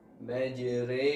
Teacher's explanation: Alquran terdapat beberapa bacaan ghorib yang perlu diperhatikan pertama imala yaitu membacanya dengan memiringkan bunyi harokat fathah ke arah kasrah